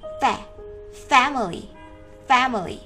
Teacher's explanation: Trọng âm sẽ nhấn vào âm tiết đầu tiên.